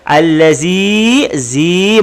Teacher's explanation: Baris bawah bertemu dengan ya mati, maka disebut mat asli, panjang 2 harakat.